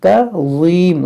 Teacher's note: ضا کو موٹا کریں گے نرمی کے ساتھ